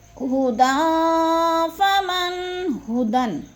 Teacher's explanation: حروف اخفا میں سے آگے تو ادھر اخفا کریں گے، آواز کو ناک میں چھپا کر پڑھیں گے